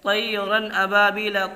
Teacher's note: جیسے طیرا ابابیل، طا زبر، طی یا ساکن سے پہلے زبر ہے، اس لیے یہاں یالین ہوگا